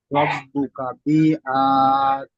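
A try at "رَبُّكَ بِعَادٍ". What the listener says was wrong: বি টান হবে না, বিয়াদ। আইনটি টান হবে, বিয়াদ। রব্বুকা বানান করেন। আইন আলিফ দাল জবর আদ।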